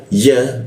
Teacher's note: Ta ba bibir bertemu bibir ba lalu masuk ke ya. Ya posisinya di tengah lidah dia ya